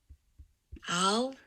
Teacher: the overall pattern here is starting relatively low, moving to a relatively high F0. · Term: rising